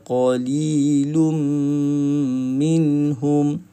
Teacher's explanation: tanwin bertemu dengan huruf mim, idgham ma'al gunnah, tutup mulut sahaja